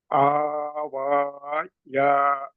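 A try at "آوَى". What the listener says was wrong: యా లేదు ఇక. యా అనేది కేవలం కుర్సీగా మాత్రమే వాడుతున్నారు అక్కడ. దానికి ఎటువంటి శబ్దం లేదు. యా అనేది చూపుడులకు మాత్రమే ఉంది. యాక్చువల్గా మనం వాడకూడదు దాన్ని. దాని శబ్దం తీయకూడదు. ఆ వా.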